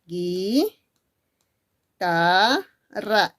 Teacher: esa supuesta sílaba y donde supuestamente había diptongo no lo hay porque simplemente esa u no está sonando y por lo tanto yo no puedo considerarlo como un diptongo